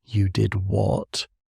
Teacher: We might say, You did what? with a rising pitch to express surprise.